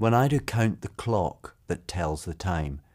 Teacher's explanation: do you see how the da da pattern matches the words that are naturally stressed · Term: iambic pentameter